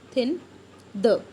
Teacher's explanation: ਦ active ਆਰਟੀਕੂਲੇਟਰ is ਦ tip of ਦ ਟੰਗ, ਜਿਹੜੇ active ਆਰਟੀਕੂਲੇਟਰ ਨੇ ਡੈਂਟਲ ਦੇ ਵਿੱਚ ਉਹ ਕੀ ਹੁੰਦੇ ਨੇ, ਟਿਪ ਆਫ ਦ ਟੰਗ, ਜੀਭ ਦਾ ਮੂਹਰਲਾ ਪਾਸਾ।